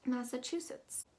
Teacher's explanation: that ch is actually going to be pronounced as a ch that second a is more of a uh sound and that u is very o o sounding